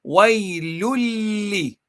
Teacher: You don't say the noon at the end at all.